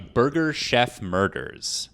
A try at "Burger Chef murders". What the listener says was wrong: You want to take that again and say burger instead of birder? I heard birder. I heard birder. Did you hear birder?